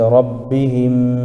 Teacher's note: میم ساکن ہے، ساکن والے حرف کو پچھلے والے حرف سے ملا کر پڑھتا ہے، جیسے حمیم زیر ہم، ربہم، میم ساکن کے بعد میم آ رہا ہے اس لیے ادغام شفوی ہوگا، اس کو ناک میں آواز کو روک کر پڑھنا چاہیے